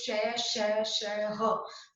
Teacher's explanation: इसके उच्चारण में श्वास वायु मुख से रगड़ खाती हुई बाहर निकलती है जिससे उष्मा पैदा होती है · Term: उष्म व्यंजन